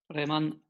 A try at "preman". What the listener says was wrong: Preman, yeah. Preman, ending at n.